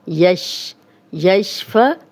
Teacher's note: یشفعو کہیں گے تو یہ حمزہ بن جائے گا، 2 آنکھوں والا ہا نہیں بنانا، عین کی کلیئر آواز آنی چاہیے